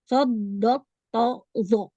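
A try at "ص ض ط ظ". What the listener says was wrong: Ya, jangan sod, nggak boleh ditekan, tapi dipantul. Kalau sod itu kan ujungnya ada dal. Sode, bode, to, zo. Nah, itu hurufnya itbak.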